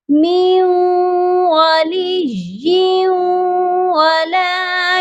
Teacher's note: لیکن اگر آپ وقف نہیں کرتے، ملا کر ہی پڑھنا چاہتے ہیں تو پھر یا مشدد کو واو کے ساتھ غنہ کر کے ملائیں گے. ادغام ہوگا یہاں پر غنے کے ساتھ.